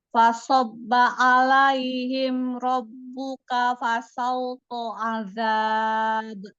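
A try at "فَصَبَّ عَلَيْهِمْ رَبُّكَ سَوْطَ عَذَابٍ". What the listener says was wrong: Nggak ada huruf fa, langsung rabbuka sauto. Fasobba alaihim rabbuka sauto azab.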